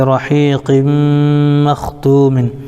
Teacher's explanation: رحیق مختوم میں قاف کے نیچے دو زیر کی تنوین ہے, تنوین کے بعد حروف یومن میں سے میم آ رہا ہے اس لیے ادغام یرملون مع الغنہ ہوگا, اس کو ادغام ناقص بھی کہتے ہیں.